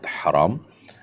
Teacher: উত্তর হলো না, এই বর্ণের মধ্যে কোনো পার্থক্য নেই, দুইটাই বড় হা, অর্থাৎ হারাম। কণ্ঠনালী থেকে যেটিকে আমরা উচ্চারণ করি সেই হাই একটাই হা, বর্ণ একটাই, কিন্তু অর্থ দুইটা।